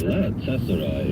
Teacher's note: It means Galata Palace, hence pronounced Galatasaray. Emphasis on middle syllable of Galata.